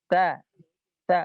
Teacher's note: Nah, maka selanjutnya adalah huruf yang ada di ujung lisan, paling ujung, yaitu huruf ya ta ujung lidah menyentuh ke gigi seri atas. Ta bukan digigit ya.